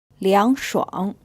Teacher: it's pronounced with a second then a third tone